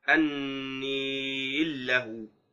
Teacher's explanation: فإن الإمالة أصلية ولا تذهب بالإدغام العارض، فتبقى الإمالة مع الإدغام